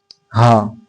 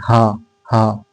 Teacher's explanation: हा बोलते हैं तो आपका कहाँ पर हवा और थोड़ा जो कि कंपन होता है वो कहाँ पर होता है? वो होता है कंठ पे।